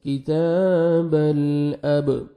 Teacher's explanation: کاف کو باریک پڑھنا ہے، تا کو بھی باریک پڑھنا ہے، اور 1 سیکنڈ تا کو آپ نے کھینچنا ہے. کتاب الاب، با حروف قلقلہ میں سے ہے، ڈبل ساؤنڈ آئے گا